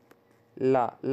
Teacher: ला जब बोलते हैं तो अगल बगल से, जीभ के अगल बगल से ध्वनि निकलती है, इसे पार्श्विक कहते हैं।